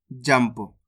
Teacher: जम अनुस्वार की मात्रा जम प तो मिलके बन जाएगा जंप इस शब्द के अंदर अपन ने आधा मा का उच्चारण करा है